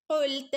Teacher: ഖ ഖ നാവിൻ്റെ മുരട് ഭാഗത്തുനിന്ന് വരണം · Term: ഖാഫ്